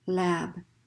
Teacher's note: And the cue to the speaker, actually the cue to the listener, is as you lengthen that vowel, they know a voiced consonant is coming. So especially a native speaker is going to know the difference between lap and lab just because you lengthen that vowel, okay?